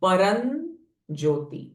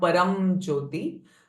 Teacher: Now here param, this anuswara is getting followed by j sound, so it will change it to n. Ma will change to n.